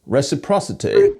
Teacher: His happy vowel is long, a bit of a diphthong